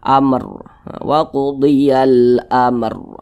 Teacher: Di sini kalau ada huruf ra sukun, di belakangnya ada huruf yang memiliki tanda baca fathah, maka huruf ra-nya itu dibaca tebal, dibaca tafkhim. Nah, sehingga pangkal lisan kita naik terangkat ke atas ketika kita mengucapkannya. Maka ini huruf ra-nya ditebalkan.